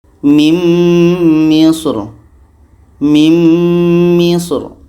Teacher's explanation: ini dibaca tebal pangkal lidah kita terangkat mimr mimr dibaca tebal pangkal lidah terangkat sekarang ro yang dibacaang